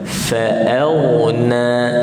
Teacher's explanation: Okey, ilam ikhfa juga, fa'auna. Okey, fa nipis, a nipis, masuk ke ghin, mati dengan tebal.